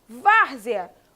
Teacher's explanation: Várzea, penúltima sílaba é a mais forte. Significa que essa palavra é paroxítona.